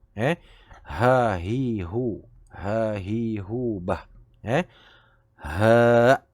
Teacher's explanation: dia tidak dikeluarkan bunyi pedas seperti huruf ha. Dia lebih ke macam huruf H dalam bahasa Melayu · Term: hak simpul